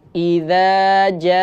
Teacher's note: perhatikan pada huruf jim, di mana dibaca 5 harakat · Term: mat wajib mutasil